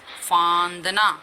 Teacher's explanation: फांदना में आवाज दोनों से निकल रही है, मुंह और नाक, तो ये अनुनासिक है